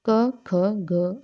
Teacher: जिनका उच्चारण कोमल तालु को टच करके होता है, तो वो क्या कंठे व्यंजन कहलाते हैं। तो क, ख, ग, हम आराम से, हमारी जीवा का पिछला भाग है वो क्या करेगा, वो टच करेगा हल्के से तालु को, तो ये क वर्ग आता है इसमें, कंठे में।